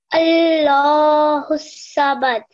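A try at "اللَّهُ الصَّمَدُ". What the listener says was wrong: Very good. You had a nice jerk at the end. Your swad was very good.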